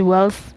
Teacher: the way we say L is more dental, like near to the front teeth, because the following consonant is the TH sound, the th. So it's interdental, so it's basically almost like a process of assimilation.